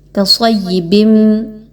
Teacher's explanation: یا پر تشدید ہے، صاد اور یا کو آپس میں مضبوطی کے ساتھ ملائیں گے اور یا کی زیر کو ادا کریں گے